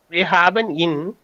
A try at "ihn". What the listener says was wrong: Ja, ihn, nicht in, ihn, long.